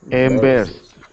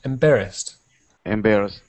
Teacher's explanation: the stress is on the second syllable